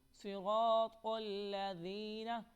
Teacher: یہ جو ذال آپ کو نظر آ رہا ہے اس کو ہم نرمی کے ساتھ پڑھیں گے، زا نہیں پڑھیں گے